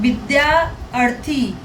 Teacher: बड़ा आ प्लस छोटा आ बराबर बड़ा आ